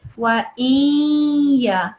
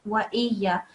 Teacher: No, don't say wa in. You have to kind of let it slide a little bit further towards the ya, and you need to make a noon, a nasal sound.